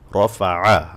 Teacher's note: আইনে গলায় চাপ দিয়ে বলতে হবে আইন